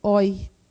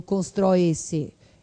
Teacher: E aí você vai encontrar um ditongo de som aberto, oi